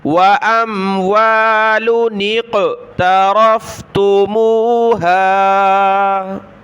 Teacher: چھوٹے نون کو قاف کے ساتھ ملایا، نون قاف زیر نیق، وَأَمْوَالٌ اقْتَرَفْتُمُوهَا۔